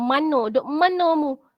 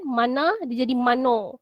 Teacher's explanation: Dalam bahasa Melayu standard dia ada bunyi A. Tapi dalam dialek Kelantan dia tak ada A. Dia jadi O.